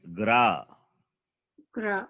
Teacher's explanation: When you say Gar, here to the letter Gakara, you are adding the vowel sound A. There is no A.